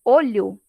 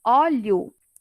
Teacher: Se eu pronuncio com o fonema o fechado, é olho, é um substantivo. Se eu pronuncio com o fonema o aberto, olho, aí já é outra palavra